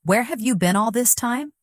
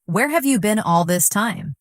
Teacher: the stress usually falls on where and been